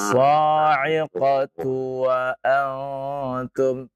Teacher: Tu-nya jangan dipanjangkan ya.